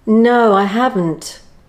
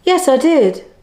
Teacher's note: the intonation still falls at the end, but it softens the hard intonation of a one-word answer